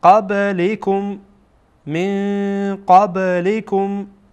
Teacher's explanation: این با در اینجا میبینید ساکنه و با از حروف قلقله هست، یعنی وقت ساکن باشه از حروف قلقله هست. قب به شکل ادا میکنین که گویا بار یک حرکت میدین، یک حرکتی در با پیدا میشه